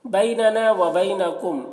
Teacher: میم ساکن کے بعد دیکھیے حمزہ ہے، تو یہاں پر میم میں اظہار شفوی ہوگا، اظہار شفوی کو جلدی پڑھیں گے